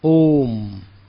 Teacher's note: जिसको तिगुनी शक्ति लगती है ओम, उसको प्लुत कहते हैं